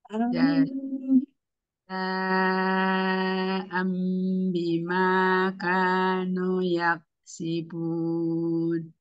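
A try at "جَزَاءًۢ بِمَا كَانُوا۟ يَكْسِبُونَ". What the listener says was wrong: Nuknya masih terlewat, Bu. Jazaa'an bima kanu yaksibun.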